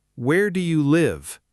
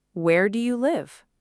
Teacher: in a WH question, the voice usually falls, not rises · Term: falling intonation